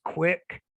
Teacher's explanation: So the QU can be represented as a K and a W.